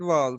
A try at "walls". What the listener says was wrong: Wall. but it's just minor, and you can improve. I know that that's common, but you can improve. Even Germans, that's how they speak too. Their W will become V.